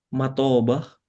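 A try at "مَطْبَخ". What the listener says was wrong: Matabah, mutoknya sukun. Nah, eh, bilang aja matbah, enggak apa. Matbah.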